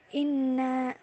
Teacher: huruf nun berharokat tasdid, cara membacanya dengan mendengung dan ditahan sesaat. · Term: gunah